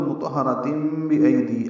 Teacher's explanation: کاف باریک، را پر، را الف مدہ ہے 2 حرکات لمبا ہے. میم میں اقلاب ہے تنوین کے بعد با آنے کی وجہ سے، دونوں رائیں پر ہیں اور تا مربوطہ پہ وقف ہے اور اس پہ ہمس ہے. · آگے تنوین کے بعد با آنے کی وجہ سے اقلاب ہوگا